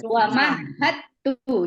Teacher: jadi dalnya hilang kita leburkan gitu ya jadi Bacanya apa yang terbaca adalah huruf ta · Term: Idam